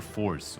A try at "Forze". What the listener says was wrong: Forze? Well, because if it's Force, then it should be a C, and it's not a C, it's a Z. Z. I think. I mean, it is a Z, but I think we pronounce it Force.